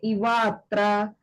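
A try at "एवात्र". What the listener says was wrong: Ev- not, sorry, Mataji, it is not Ivatra, it is Evatra. Evatra, yeah.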